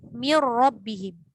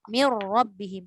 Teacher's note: Sebab idgham. Masuk terus pada ra sepenuhnya. 100% pada ra. Tak ada bayangan nun langsung. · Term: idgham tanpa dengung